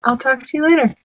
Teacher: the words talk and later receive the stress